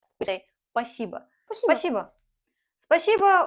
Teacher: sometimes we are so lazy that we don't even pronounce this first S.